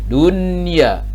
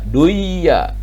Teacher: Karena ini posisinya nun sukun menghadapi huruf iya pada satu kalimat, maka dibacanya idhar